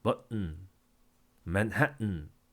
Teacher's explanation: 글로털 스탑 해가지고 글로털 우리의 성문이 스탑 막혔다. 성문 폐쇄다.